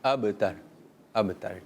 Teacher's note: اور هو الابتر با میں ہم کلکلا بھی کریں گے